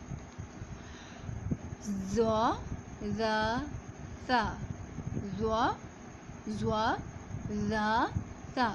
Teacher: زبان کی نوک جب ثناء علیہ کے کنارے سے لگے تو یہ حروف ادا ہوتے ہیں. ثناء علیہ کے کنارے سے لگے تو یہ حروف ادا ہوتے ہیں.